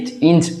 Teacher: இடைநாக்கு இடையன்னத்தில் படுறதுனால பிறக்குது